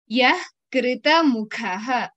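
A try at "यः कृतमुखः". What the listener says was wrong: So when visarga is coming before the ka or kha, we have to pronounce it as half. Like yah. It is not yaha. We don't pronounce it completely, although it is not wrong to do so.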